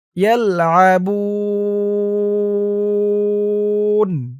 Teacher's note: ওকফ করার কারণে পেশের পরে ওয়াও সাকিন এক আলিফ টানটা ৩ আলিফ হয়ে গেছে। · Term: মধ্যে আরজি